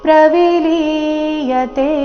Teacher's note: ಪ್ರವಿಲಿಯತೆ ನಲ್ಲಿ ಲಿ ದೀರ್ಘ ಇದೆ ಕೊನೆಯತೆ ದೀರ್ಘ ಇದೆ